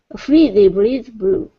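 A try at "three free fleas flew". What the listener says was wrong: make sure on fleas and flu it's a real l sound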